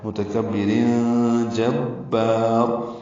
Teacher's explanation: تنوین کے بعد جیم آنے کی وجہ سے اخفا ہو رہا ہے · جیم کو با سے ملائیں گے، با کو لمبا کریں گے، را پر پڑھیں گے.